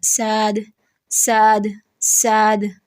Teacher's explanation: مخفف یعنی ہلکا پڑھنا، یعنی صاد کو سین پڑھنا